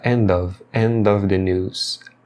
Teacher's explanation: eles vão emendar o som de end final com of e vai ficar end of the news.